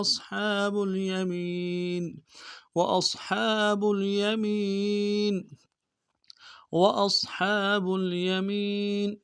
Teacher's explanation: اس میں وأصحاب میں حمزہ کو صاد کے ساتھ ملانا ہے، صاد کو موٹا کریں گے. ہا کے اوپر کھڑا زبر ہے، ایک مقدار میں کھینچیں گے، ہا کو گہرائی سے لگیں گے.